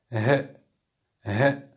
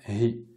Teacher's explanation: Il y a un peu d'air qui va sortir, mais c'est surtout les cordes vocales qui vont vibrer.